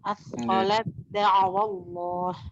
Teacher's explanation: Tak sukun diidghamkan ke dalam dal sebab terjadi hukum idgham mutajanisain, yakni dibaca idgham kamil